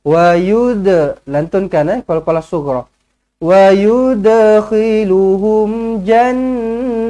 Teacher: Wa yud, huruf dal mati, qalqalah sughra